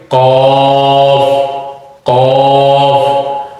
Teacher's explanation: زبان کی جو جڑ ہے وہ اوپر کے تالو سے ٹکرائے گی اور موٹا کر کے اس کو پڑھیں گے